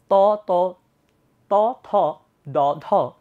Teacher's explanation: আপনি একটু উচ্চারণ করেন, ত, জিহ্বার ডগা কোথায় গিয়ে লাগতেছে, ফিল করেন। অবশ্যই দাঁতের পাটিতে, উপরের দাঁতের পাটিতে। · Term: দন্ত ব্যঞ্জন